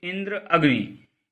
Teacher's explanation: इनमें संयुक्त अक्षर से पहले के अक्षर ई और आ पर जोर दिया गया है।